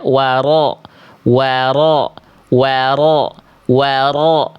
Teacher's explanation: Takrir dia bergetar tetapi tidak dengan getaran yang terlampau berlebihan. Jadi ketika kita lafalkan huruf ro getarannya ada, tetap jelas, tetap tegas, tapi bukan juga samar.